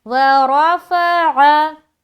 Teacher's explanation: आगे चले, वरफ़अ, वाव ज़बर वा, रा ज़बर वा, फा ज़बर फा, आइन ज़बर आ निकालेंगे और रा को मोटा रखेंगे